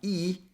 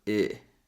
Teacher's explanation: E is a tense sound, and here we want a more relaxed sound. So the tongue is a little bit lower, so not E, but I.